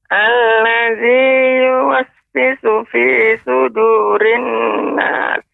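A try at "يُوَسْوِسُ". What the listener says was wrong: Ya, yuwaswisu, Nek, pengucapannya dia lebih banyak ya, suaranya tajam. Tinggal pengucapan beberapa huruf, misalnya huruf sin, ya lebih jelaskan. Misalnya fi sudurin nas, diberikan desisnya lebih banyak.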